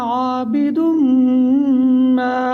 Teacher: عابد ما، میم میں یہاں پر ہم غنہ کریں گے